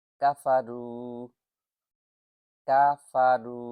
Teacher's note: রু এক আলিফ টান হবে। ওয়াও সাকিন এর পূর্বের হরফের উপর পেশ আসছে